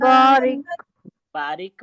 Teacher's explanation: را یہاں پہ باریک پڑا جائے گا اور کاف کی ادائیگی ہوگی